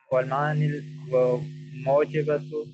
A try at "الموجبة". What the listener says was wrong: مو میم کے اوپر زبر پڑھنا ہے. میم کے اوپر زبر پڑھنا ہے، کیا پڑھنا ہے؟